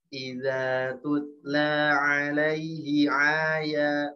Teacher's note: Ini bukan ain, ini hamzah ya.